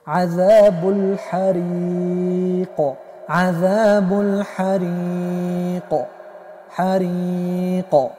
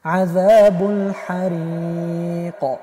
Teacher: قاف ما در اینجا پر تلفظ میکنیم و به شکل پر قلقله هم میکنیم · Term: قلقله پر